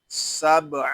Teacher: یہاں با ساکن میں کلکلہ ہوگا کیونکہ با حروف کلکلہ میں سے ہے، اور جب حروف کلکلہ ساکن ہوں تو ان میں کلکلہ خوب ظاہر ہوگا۔